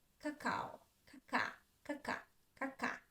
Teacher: All of my attention is on the stress syllable, cacao. Even at the first syllable where we have a, ka, I don't pronounce clearly ka. I say it shortly.